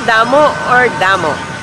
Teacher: it ends in a vowel and the vowel has a sudden stop sound